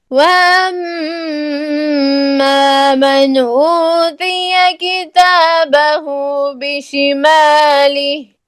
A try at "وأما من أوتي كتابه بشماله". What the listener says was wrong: मन के ऊपर कलकला नहीं करें. नून में आवाज देखें किस तरह करनी है. वअम्मा मन ऊतिय किताबहु बिशिमालिह.